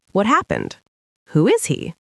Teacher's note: for WH questions like who, what, where, why, the voice often goes down or stays flat.